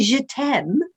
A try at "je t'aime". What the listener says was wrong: Well, you say je t'aime in a very British posh accent, which doesn't really go with je t'aime.